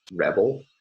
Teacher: in the second syllable of rebel there's a syllabic lateral approximant or maybe a schwa